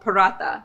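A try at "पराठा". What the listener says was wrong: Yes. Roll your R a little bit.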